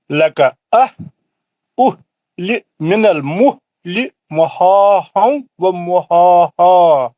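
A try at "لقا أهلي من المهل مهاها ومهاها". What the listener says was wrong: جھٹکے سے پڑھیں گے تو نیچے کے حلق والا دو چشمی ہاں نکلتا. لکا نیچے کا یہ دو چشمی ہاں ہے. یہ اصلی ہاں نہیں ہے جو آپ سکھ رہے ہیں.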